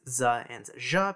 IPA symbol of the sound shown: z ʒ